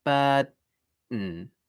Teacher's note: So similarly with the word burden, I can just put my tongue into the d position, bird, and then just do an n sound